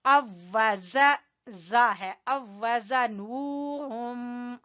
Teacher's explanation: अवजा, ये वाली वाव जो है ये इसमें दूसरे वाव में आ गई है, एक ही मखरज के और एक ही जैसे दो हरफ आगे हैं, पहला साकिन है दूसरा मुतहर्रिक है, इसलिए इस वाव को पढ़ेंगे शद के साथ